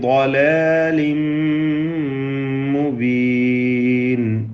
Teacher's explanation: ളലാലിൻ ളാദിന് തഫ്ഖീം കൊടുക്കണം, തടിപ്പിച്ചോദണം. ഇസ്തിതാല എന്ന അതിൻ്റെ സ്വന്തമായ സിഫത്ത് അത് ശ്രദ്ധിച്ചുകൊണ്ട് ശരിയായ അതിൻ്റെ മഖ്റജിൽ നിന്നുമുള്ള ഉച്ചാരണം നൽകണം.